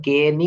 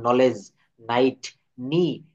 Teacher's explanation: শব্দের শুরুতে কে N থাকলে এই কেটা উচ্চারিত হবে না, এন থেকে শুরু হবে।